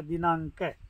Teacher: तो आधा अंग है अनुस्वार, आगे जो वर्ण होता है उसका पांचवा, उसका अंतिम जो अनुस्वारित जो अक्षर होता है उसमें बदल जाता है। जैसे दिना के ऊपर का जो अनुस्वार है तो ng में बदलेगा